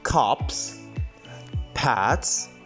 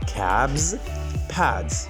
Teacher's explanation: the s sound is actually pronounced as a s in the two first words, cups and pats, but it is actually pronounced as z in the word cab and pad